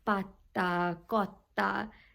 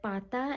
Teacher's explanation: the T in the sound in between, it's a bit emphasized and a bit longer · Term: geminates